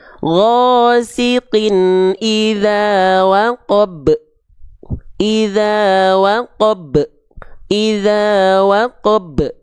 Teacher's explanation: Banyak orang sudah melafalkan ba dengan pantulan, tapi pantulannya tertahan. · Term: pantulan tertahan